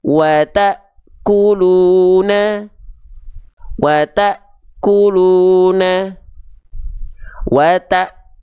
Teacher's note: terhenti terhentak karena ada Hamzah sukun setelahnya